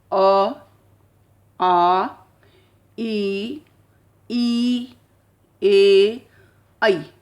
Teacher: हमारे होठ जो हैं गोल नहीं हो रहे बल्कि हल्के से फैल रहे हैं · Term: अवृत्ताकार